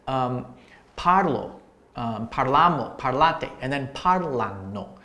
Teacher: your stress is always going to be 2 syllables back before the end of the word for the anno endings. So if I say parlo, parlamo, parlate, and then parlano.